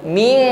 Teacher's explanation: di sini ada bunyi ng ya, langsung ming langsung masuk pada makhraj huruf kaf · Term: ikhfa adna